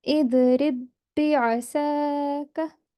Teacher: you would be reading only one ba. The ba sakin would be completely ignored. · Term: idgham mutamathilain